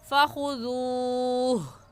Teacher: जब वक़फ़ करेंगे तो हा है आखिर में और आखिरी हर्फ को साकिन करते हैं, ऐसे हो जाएगा फ़ख़ुज़ूह।